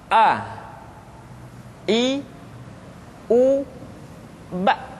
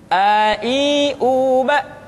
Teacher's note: Yang pertama adalah huruf A. Makhraj ketika mengucapkan huruf A berada pada tenggorokan yang terjauh